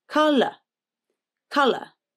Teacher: With colour, the first syllable is stressed, k, and the ou in the unstressed second syllable is a schwa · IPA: /ə/